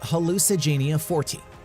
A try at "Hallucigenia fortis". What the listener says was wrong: Hallucigenia fortis. Where did the S go?